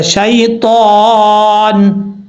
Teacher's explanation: جب رکیں گے سٹاپ کریں گے تو نون ساکن ہو جائے گا، شیطان۔ اب یہاں پر لوگ غلطی کرتے ہیں، پڑھتے ہیں شیطان، شیطان نہیں پڑھنا، شین یا زبر شی ہوتا ہے، شے نہیں ہوتا، شی طان، تا حروف مستعلیہ میں سے پر پڑھا جائے گا، جب یہاں پہ وقف کریں گے تو نون ساکن ہو جائے گا۔